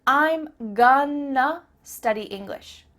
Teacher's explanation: I'm gonna study English means I'm going to study English. That word to simply becomes a.